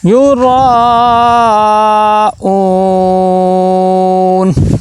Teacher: تو 1 الف کے برابر 2 سے 3 الف کے برابر اس کو لمبا کریں گے. یورا را کو موٹا کر کے پڑھیں گے